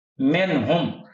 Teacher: यहाँ पर गुन्ना है, यहाँ पर नहीं है, हालांकि शुरू में मिन है, क्योंकि हरूफ हलकी में से हा आगे साथ आ गई, इसलिए यहाँ पर गुन्ना नहीं